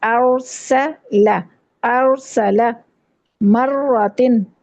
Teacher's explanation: ارسلہ کرتے ہوئے نہ تو آ کو پر کرنا ہے نہ سین کو پر کرنا ہے. بعض دفعہ ارسلہ کر دیتے ہیں ہم، اس طرح نہیں.